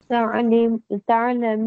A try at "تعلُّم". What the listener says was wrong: تعلم لام کے اوپر دم ہے.